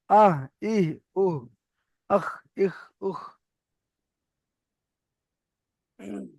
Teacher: কণ্ঠনালীর শুরু হতে উচ্চারিত হয় হামজা হা